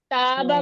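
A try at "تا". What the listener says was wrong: नहीं करना, होंठों को पीछे की तरफ नहीं लेके जाना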